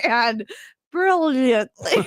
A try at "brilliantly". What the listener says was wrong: You don't need to roll. not Spanish. You don't need to roll brilliantly. She's accidentally rolling her R's when she doesn't need to.